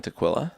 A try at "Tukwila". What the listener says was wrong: You say Tukwila, interestingly. Yeah, you said it kind of like tequila.